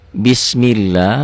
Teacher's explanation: lafadz Allah ini dibaca tipis tarqiq Kenapa tipis karena sebelumnya barulah baris dibawah nih penyebabnya Hai laba-laba